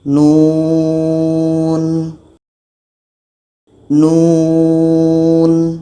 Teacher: Ada nun, wau, nun. Jadi kita baca panjangnya enam harakat.